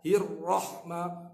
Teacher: Huruf ra, huruf tikrar, dia ada bergetar. Hirrahma, jaga getaran tu bukan sampai 4, 5, 6 kali.